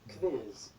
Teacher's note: q is confusing because it sounds like k and v together or k and w